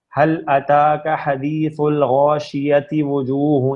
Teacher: اگر آپ وقف نہیں کریں گے تو پھر یہ تا ہی پڑھی جائے گی